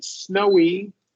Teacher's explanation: And now I also want to hear you close that long O and emphasize the W. Snowy. Snowy, yeah.